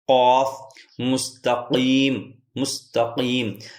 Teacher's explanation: زبان کی جڑ اوپر جہاں کوا ہوتا ہے اس سے مل کر لفظ قاف ادا ہوتا ہے